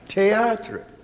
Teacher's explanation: there's no TH sound in French